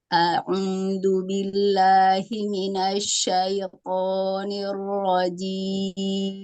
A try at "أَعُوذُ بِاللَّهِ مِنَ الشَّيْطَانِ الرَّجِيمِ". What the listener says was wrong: Shinnya tambahi lagi Bu, tafasinya. Minash, minasyaitoni.